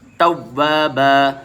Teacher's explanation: انہو کان توابا واو الف سے مل رہا ہے اس لیے الف مدہ ہو رہا ہے، توابا دو زبر کے ساتھ جب وقف کرتے ہیں تو الف بھی پڑھا جاتا ہے